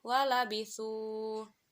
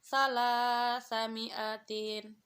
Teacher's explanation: Terdapat hukum bacaan tarkik, yaitu huruf lam berharokat fathah atau disebut dengan lam tarkik dan dibaca tipis